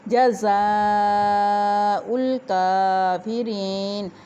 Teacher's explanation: جزاء الکافرین الف کے اوپر مد ہے، اس مد کو ہم کم از کم 6 الف کے برابر لمبا کریں گے۔ کاف باریک ہے، اس کے اوپر کھڑی زبر کافرین کی، اس کو 1 الف کے برابر ہم لمبا کریں گے۔ یا ساکن را کے نیچے زیر یا مدہ 1 الف کے برابر لمبا کریں گے، اور یا کی آواز یہاں پہ زیر ہونے کی صورت میں باریک ادا کی جائے گی۔